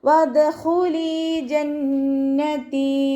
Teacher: വദ്ഖുലി ജന്നതി. നൂനിന് ശബ്ദ വന്നു. നല്ലോണം മണിച്ചു കൊടുക്കുക. അഖ്മൽ ഒന്നെയാണ്, നല്ലോണം മണിച്ചു കൊടുത്തിട്ട് ഉച്ചരിക്കുക.